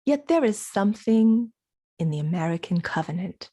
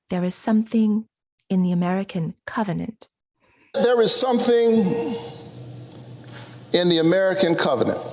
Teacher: stress the noun because that has a lot of content but we can choose to stress the word something if we want to emphasize something special